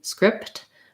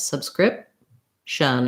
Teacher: That P we don't release.